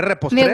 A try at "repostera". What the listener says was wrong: Repostera, no trera, sino repostera.